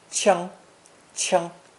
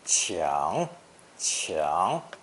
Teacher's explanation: The seventh character in today's lesson again takes 仓 as its phonetic and adds the hand radical to create a verb meaning to strike, hit, or knock, pronounced first tone, 枪, 枪. But more commonly in spoken Mandarin, it's pronounced third tone, 抢, 抢, meaning to snatch, rob, take by force, or rush to get something before anybody else.